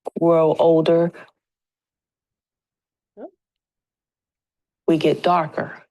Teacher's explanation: This example is going to be syllable initial fricative stopping. So the TH is going to sound a bit more like a D sound.